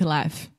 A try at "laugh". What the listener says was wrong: Yeah, but this is a different vowel sound. So we do not say le, eh, eh. We say la, ah. So just like cat, master, disaster, laugh.